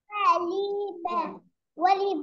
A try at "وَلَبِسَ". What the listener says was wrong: لا لا، ليه ليه اللام مفتوحة؟